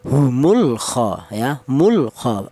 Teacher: Namanya izhar itu dibaca jelas yaitu lam matinya dibaca jelas atau diperlihatkan ya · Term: izhar qamariah, idhar qamariyah